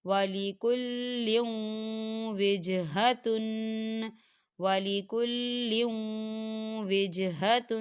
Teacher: یہ دیکھیں لام کے نیچے تنوین ہے اور تنوین کے بعد واو آ رہا ہے، اور واو جو ہے حروف یرملون میں سے ہے تو یہاں پر ادغام ہوگا تھوڑا سا غننے کے ساتھ